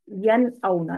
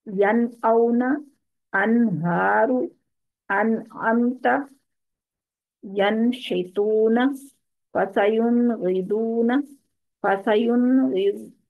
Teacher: यन औना, नून साकिन और हमजा, हरूफ हल्की का हमजा आ रहा है इसमें, तो इसको यन औना नहीं करेंगे बल्कि यन औना, नाक में आवाज नहीं लेकर जाएंगे, इसको क्लियर करेंगे नून की आवाज को। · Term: इजहार